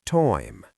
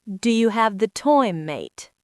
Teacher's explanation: in parts of London, you take a word like time and it sounds like toy-m.